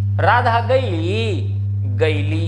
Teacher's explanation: भोजपुरी ईकार बहुला बोली है, हर शब्द में ई की मात्रा जोड़ दी जाती है।